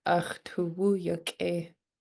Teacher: That apostrophe after the K means that you need to pinch it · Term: pinched K